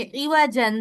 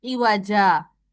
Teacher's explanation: दो जबर की तनवीन को अलिफ मद्दा से बदलेंगे। जैसे इवाजन से इवाजा, दो जबर में से एक जबर गिराई, अलिफ मद्दा के अलिफ मद्दा उसको बना के पढ़ा इवाजा।